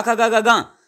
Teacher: यानी कवर्ग का खा गा गा, ये कंठ स्थान होता है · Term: कंठ वर्ण